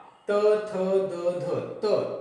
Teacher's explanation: त म्हणताना जीभ जी आहे, जिभेचा शेंडा दाताच्या थोडा पाठीमागे जाऊन येतोय. त थ म्हणजे हे दाताचा उपयोग होतो म्हणून त्याला दंत्य म्हणतो आपण. · अ आणि आ म्हणताना मी कंठाचा वापर करतोय.